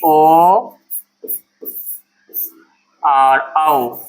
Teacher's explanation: ओ और औ दोनों का उच्चारण कहाँ से होता है? कंठ प्लस ओष्ठ से। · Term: कंठोष्ठ वर्ण